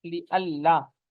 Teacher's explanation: اس کا نون جو ہے وہ یہاں پر لام میں اس کا ادغام ہو گیا ہے